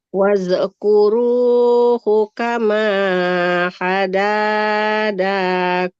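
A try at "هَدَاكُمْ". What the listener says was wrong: hada. Enggak hadadakum, Ibu. Hadakum. Dalnya satu saja. Nah, ini bukan huruf dah. Enggak huruf dal ya, Ibu.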